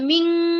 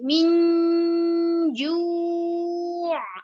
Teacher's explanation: nun bertemu dengan jim itu adalah bacaan ikhfa, dibaca samar, dibaca min, bukan ming tapi min ju', nun dan jim.